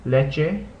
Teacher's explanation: the e is a shorter sound in Spanish than it is in English